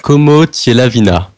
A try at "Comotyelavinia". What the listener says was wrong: Alors, il y a une erreur. Je me permets, mais il y a une petite erreur de prononciation. C'est Vigna à la fin. Vigna, De la vignasse.